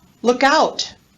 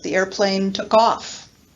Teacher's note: these are all examples of phrasal verbs where the particle receives the stress